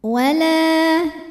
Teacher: karena ada alif sebelumnya baris fathah, maka huruf lam panjang 2 harokat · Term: mad tabi'i zahiri